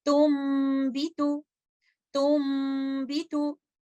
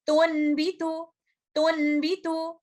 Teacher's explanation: तो यहाँ पर नून साकिना का इक़लाब करते हुए, इसको कंप्लीट गुन्ना का टाइम देते हुए, और इस सूरत में ये गुन्ना लेटर मीम का गुन्ना होगा क्योंकि लेटर नून को हमने मुकम्मल तौर पर बदल दिया है लेटर मीम के अंदर। तो इस लफ्ज की अदायगी हम कुछ इस तरह से करेंगे, तुम भी तू, तुम भी तू।